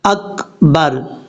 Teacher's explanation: کاف میں قلقلہ نہیں کرنا۔